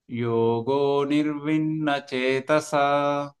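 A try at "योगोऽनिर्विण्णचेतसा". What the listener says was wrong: అనిర్విన్న highlight అవ్వాలి. యోగో separate చేయొద్దు. యోగో నిర్విన్న separate రావద్దు. కలిపేసి అనిర్విన్ హాఫ్ అమాత్ర పలకాలి. యోగో అనిర్విన్న చేతస.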